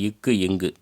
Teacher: நாவினது முதற் பகுதி அன்னத்தை தொடுவதனால் தோன்றும் எழுத்துக்கள்